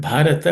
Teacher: Bha is also aspirated consonant. is the fourth letter in the per class of consonants.